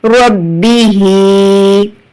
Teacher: ہا کھڑی زیر ہی، ربی ہی. ہا کے نیچے کھڑی حرکت ہے تو یہاں پر آپ کو ایک الف کھینچ کر پڑھنا ہے